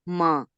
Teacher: ہم نے نون کی آواز کو چھپانا ہے، یہ نہیں کہ ہم نون پورا ادا کریں لیکن 2 حرکات دے دیں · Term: نون غنہ